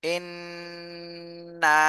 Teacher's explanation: জবরের বামে খালি আলিফ মদের হরফ এক আলিফ টান দিতে হবে